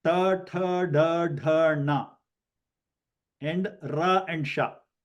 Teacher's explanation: These are easy to identify because for the right pronunciation, you have to roll back your tongue. That is how they call retroflex and murdanya.